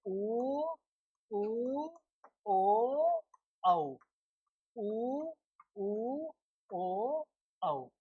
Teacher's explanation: क्योंकि इनका उच्चारण करने पर हमारे ओष्ठ वृत्त की तरह क्या हो जाते हैं, गोल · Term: वृत्ताकार